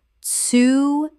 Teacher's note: Three syllables with the TS sound at the start fully pronounced.